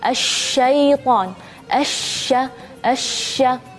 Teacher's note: kalau huruf Sin sama Shad itu anginnya satu arah tapi kalau Shin keluar dari semua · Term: tafasyi